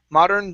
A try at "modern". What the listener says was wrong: Okay, give me a good D instead of modern. Okay, pull your tongue back.